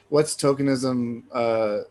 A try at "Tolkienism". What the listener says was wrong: Tolkienism. Sorry, a lot of people get that wrong. It sounds like you're saying tokenism, but it's Tolkienism.